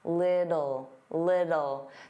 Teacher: native speakers, including me, generally pronounce the T's as soft D's